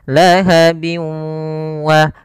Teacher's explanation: gunnah yaitu idgham yang disertai dengan gunah yaitu cara membacanya yaitu masukkan suara tanwinnya bin ketemu wa dimasukkan ke huruf wau dan ditahan karena disertai dengan gunah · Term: idgham maal gunnah